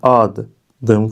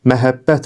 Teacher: kökün tərkibində qoşa d və qoşa b samitləri tələffüz zamanı düşmür. Yəni onlardan biri tələffüz zamanı düşmür.